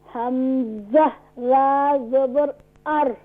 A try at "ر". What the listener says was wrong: ار نہیں, را is full mouth.